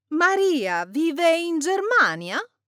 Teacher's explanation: When speaking, let your intonation rise at the end. The rising pitch is the signal, and Italians will hear it immediately.